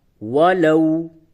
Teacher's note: لو كانوا يعلمون، واو زبر وا، لام واو زبر لو، ولو، یہ واو ساکن سے قبل زبر ہے، یہ واو لین ہے، نرمی کے ساتھ اسے ادا کریں گے۔